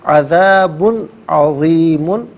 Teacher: عذاب میں با پر 2 پیش کی تنوین ہے، اس کے بعد عین حرف علقی آ رہا ہے، تو یہاں پر ناظرین اظہار کیا جائے گا، یعنی اخفاء غنہ یہ نہیں کیا جائے گا، نارملی پڑھا جائے گا۔